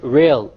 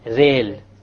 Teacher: The English R comes from the middle of the tongue. Whereas the Arabic ra comes from the tip of the tongue along with the incissors or the gum behind the incissors.